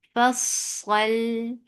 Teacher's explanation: Sad is heavy, lam is light. · Sod will get sifa of rakhawa. And it has safir and it is heavy.